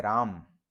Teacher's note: जो उच्चारण का अंत है म पर दो दोनों होठ सट जाते हैं लेकिन लिखते हैं राम यानी जो अ है उस पर अंत